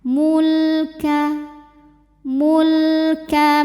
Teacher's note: tahan bunyi m dengungnya ya dan tahan sampai kurang lebih dua harakat · lam lam jangan mantul hati-hati ya dan tidak boleh ditahan mulka mulka mim dari mim pertama ke mim kedua yang tasdid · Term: lam sukun